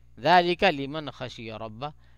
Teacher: لمن پہ بھی اظہار ہوگا کیوں کہ نون ساکن کے بعد خا آ گیا اور خا حرف حلقی میں سے ہے ایک، تو اس لیے یہاں پہ جو ہے اظہار کریں گے.